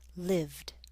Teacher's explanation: In terms of pronunciation, a voiceless consonant at the end will make the ed ending sound like a t, talked. A voiced consonant like v in live will make the ed ending sound like a d